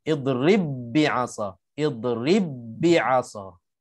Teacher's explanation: Di ba yang qalqalah ni tak ada, dah dimasukkan ke dalam ba yang kedua. Ini namanya idgham, memasukkan. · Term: idgham mutamathilain